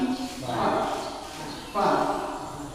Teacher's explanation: bedanya dengan P, dia ada keluar angin